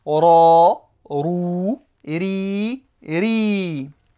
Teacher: le ra est une lettre emphatique quand il y a le son A. Donc, on ne va pas dire ra, mais on va dire ra, grave.